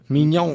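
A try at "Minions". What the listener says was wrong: No, Minones. Minones, I believe. Minone. That's what it is. Not nays. They don't pronounce the S.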